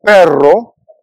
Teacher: the Spanish R is rolled but there are clear rules about when it is strongly trilled like in perro